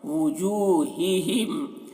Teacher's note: واو پیش وو، تو وو اسے پڑھنا ہے، او نہیں پڑھنا ہے، حمزہ نہیں بنانا ہے، واو کو ہی پڑھنا ہے.